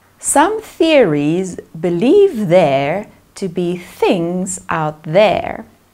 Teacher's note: there are two dental th sounds both of which are produced by compressing the air through the tongue tip behind the top teeth